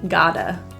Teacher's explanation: Got to turns to gotta. The T is also a flat T, sounds like a D